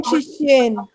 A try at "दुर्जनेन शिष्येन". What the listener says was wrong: दुर्जनेन शिष्येन, अच्छा न वो डालना है, अकार है इसके बाद, हलंत नहीं है। ठीक है, तो ऐसे उच्चारण करना है।